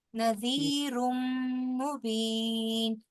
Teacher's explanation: मीम की मुशद्दत को भी गुन्ना कीजिए ना